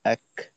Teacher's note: তাও আওয়াজের শেষের অংশে অর্থাৎ যেমন হামজা কাফ জবর এক শুরুর দিকে আওয়াজটা আটকাবে কিছুটা। আটকানোর পরে শেষে একটু বাতাস ছাড়তে হবে।